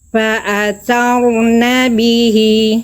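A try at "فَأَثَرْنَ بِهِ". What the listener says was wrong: Tegaskan sedikit lagi. Tuh, agak enggak jelas rnya.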